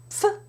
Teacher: And then it can sound something like pf, where the F is already in position, and you bring the lips together for the P, and then release. There is a strong release of air, strong exhalation.